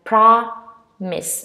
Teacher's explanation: you stress on the first syllable